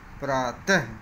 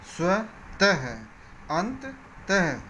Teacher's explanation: इसका उच्चारण करते समय ह की हल्की सी ध्वनि आती है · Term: विसर्ग